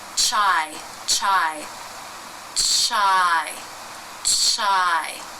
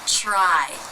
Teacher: So we're not getting the R. The R involves a pullback of the tongue. So in order to get an R sound, chur, chur, chur, it has to come back from that initial forward position for the CH.